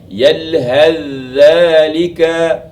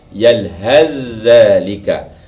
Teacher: Tetapi bila kita baca sambung, kita tidak membunyikan lagi huruf sa. Kita terus kepada bunyi yalhadzalika. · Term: idgham al-mutajanisain